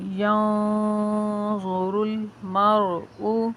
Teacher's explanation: نون ساکن کا اخفا ہوگا، ناک میں آواز جاتی ہوئی آپ کے محسوس ہوگی نون کے اوپر